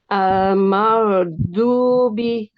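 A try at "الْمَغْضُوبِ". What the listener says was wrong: Bukan huruf ro. Mal. Coba Umi bilang ro.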